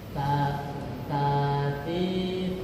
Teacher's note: ujung lidah bertemu dengan ujung gigi seri atas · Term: huruf ta